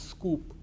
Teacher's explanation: They will say scoop, because there is a s. When the k is preceded by a s sound, then there is no aspiration. There is no h.